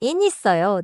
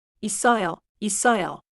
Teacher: the final sound of 있 links into 어 — so 있어요 often sounds like 이써요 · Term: smooth link